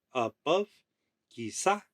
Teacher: you would like lilt your voice on the second syllable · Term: iambic foot